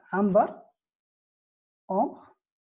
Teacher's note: La consonne aïn a disparu. Et l'emprunt a gardé la voyelle A.